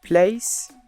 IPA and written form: pleɪs (place)